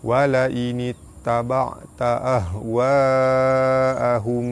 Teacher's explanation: Huruf mad bertemu dengan hamzah dalam satu kalimah. Hukum dia mad wajib mutasil, dibaca panjang 5 harakat